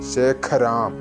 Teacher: നമ്മുടെ വായയുടെ കടഭാഗം അത് വെച്ചിട്ട് വായു ശക്തമായി പുറത്തേക്ക് വിടുമ്പോൾ കേൾക്കുന്ന ആഖ